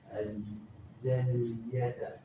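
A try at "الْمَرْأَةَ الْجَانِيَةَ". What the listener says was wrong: Jadi ada hamzahnya kamu nggak baca, kasihan ya.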